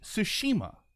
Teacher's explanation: I stress the middle syllable